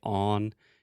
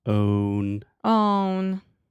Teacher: You almost say on. You really have to have the O sound, that long moving vowel. Own. Own.